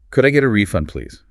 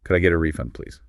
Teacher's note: Notice the rising intonation here because this is a question.